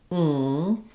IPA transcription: ŋ